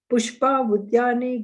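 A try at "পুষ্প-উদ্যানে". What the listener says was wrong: No, you are breaking the reading on this in the meaning. So you don't break the reading. Pushpa Udyane.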